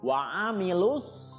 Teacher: alif lamnya tidak dibaca, jadi langsung masuk ke huruf sod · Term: alif lam syamsiyah